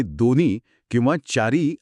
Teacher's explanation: पण जेव्हा माणूस खूप वेगाने बोलत असतो ना, तेव्हा तो हाचा उच्चार पूर्णपणे वगळून टाकतो